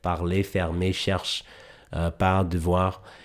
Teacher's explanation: your tongue kind of pump fakes, gets really close to what's called the uvula, but doesn't actually make contact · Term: French R sounds